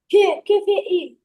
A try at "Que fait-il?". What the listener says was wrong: Non, fais la liaison. Que fait-il?